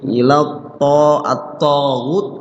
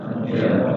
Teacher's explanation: to-nya dibaca panjang, ya, panjangnya 2 ketukan karena dia adalah matobi.